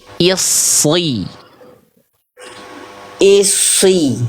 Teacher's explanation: Lidah dalamnya diangkat ke atas, kayak melafalkan huruf qaf.